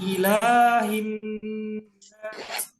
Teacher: ini la-nya ini panjang 2 harokat